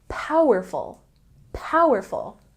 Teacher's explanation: say powerful with a stress on the first syllable